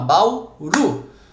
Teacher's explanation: Qual que é a sílaba tônica de Bauru? É o Ru, não é? É a última, ela é uma oxítona